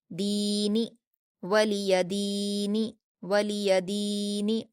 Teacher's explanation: वलिया, वलिया, दाल पर या मद्दा है 2 हरकत खींचेंगे